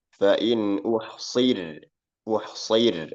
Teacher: shadnya tebal tapi rnya tipis